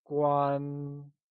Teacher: It is said with a high level tone, like guan.